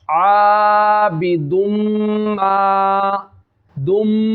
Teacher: या इदगाम का कायदा हो रहा है, गुन्ना करना है एक अलिफ की मिकदार। दुम, आबिदुम, दोनों होठ जब गुन्ना करेंगे मिल जाएंगे।